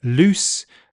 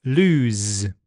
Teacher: The S is voiceless in loose, but it's voiced in lose.